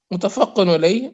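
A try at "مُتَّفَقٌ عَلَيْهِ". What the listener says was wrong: متفقن علیہ، یہ جو متفقن ہوتا ہے نا یہ غلط لفظ، متفقن علیہ، متفقن یعنی تا کے اوپر شد ہے، قاف کے اوپر شد نہیں آئے گی، ٹھیک ہے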